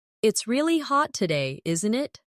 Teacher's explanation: Notice how isn't it can sound like in it in very casual British English.